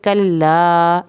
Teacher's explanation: लाम की शद जो है सबसे हल्की पढ़ी जाने वाली शद है